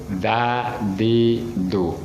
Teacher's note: Da ujung lidah ya berada di belakang gusi gigi atas. Dadidu nempel pada ujung lidah, nempel pada gusi gigi atas.